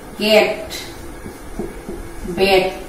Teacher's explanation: ধরো ইংরেজিতে আমরা যেমন লিখি ক্যাট, ব্যাট, আমরা এরকম লিখি, কিন্তু দেখো ক্যাট, ব্যাট, এই যে এগুলো হচ্ছে বিবৃত উচ্চারণ। এই জাতীয় উচ্চারণ যেগুলো হবে, তোমার মুখটা একটু ফাঁক হবে, এগুলাকে বলা হবে বিবৃত বা সাধারণ উচ্চারণ।